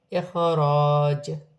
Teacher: یہاں الف مدہ ہے، واو کی صورت میں دو زیر کی تنوین گر جائے گی اور جیم ساکن ہو جائے گی، ساکن ہونے کی صورت میں جیم میں قلقلہ پیدا ہوگا